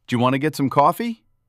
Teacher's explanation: We squish the small words together. Want to becomes wanna. Going to becomes gonna. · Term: reductions